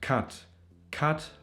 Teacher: The A vowel can also be pronounced a little longer, a little more tense, so then it almost sounds like an O.